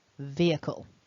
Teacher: the strong the stressed syllable in this word is the first syllable